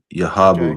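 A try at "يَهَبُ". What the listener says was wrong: Yahabu. Not yahabu. Again, you're adding an aleph. Not yahabu, but yahabu.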